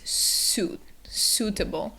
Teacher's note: the vowels, the U and I together. They're making an oo sound, so it's suitable.